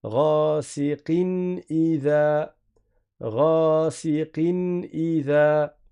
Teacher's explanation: Il n'y a pas ici de ghunna prolongée. On va prononcer normalement. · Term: idhar